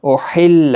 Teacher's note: احل ہا کا خاص خیال رکھیں، وسط حلق والا ہے، تشدید کا بھی خیال رکھیں، تشدید والا حرف تھوڑا سختی کی ضرورت تاکہ تشدید ظاہر ہو۔